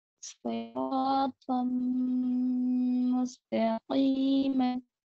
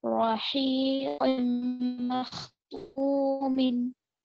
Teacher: तन्वीन के बाद मीम गुन्ने के साथ पढ़ेंगे